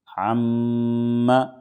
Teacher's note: یعنی ناک میں تھوڑی دیر آواز کو روکیں گے، اس کو غنہ کہیں گے